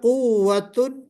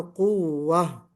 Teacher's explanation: تو گول تا کے اوپر جب ہم وقف کریں گے تو اس کو ہا سے بدل دیں گے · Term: وقف بالابدال